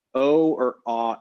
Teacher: Trying to get some data to say exactly what that sound is, because really nobody knows. But it's something like O or ah. It's a low back vowel.